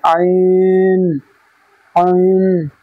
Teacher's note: আইনের মাখরাজ হচ্ছে কণ্ঠনালী বা গলা, গলার মাঝখান হতে